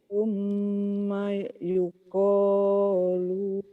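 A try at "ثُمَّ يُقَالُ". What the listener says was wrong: pendek lu-nya.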